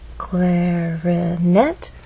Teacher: make our voice Glide up clarinette has three syllables clarinet but it's the final syllable that is stressed and there's a pause right after